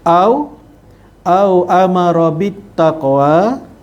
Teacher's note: amara tu ra yang dibaca tebal. Kemudian ada bit taqwa, alif lam syamsiyah, lam yang tidak disebut dalam bacaan.